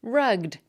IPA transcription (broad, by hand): rʌɡd